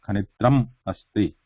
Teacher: So in that case, you can, and actually you should write ma like this only, even if it is followed by consonant, because there you are saying, you are taking a little break in between, and you are pronouncing that ma as a full ma with complete stop of the air